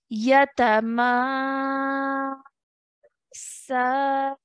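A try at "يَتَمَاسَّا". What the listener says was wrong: Stretching for a bit longer for the ma.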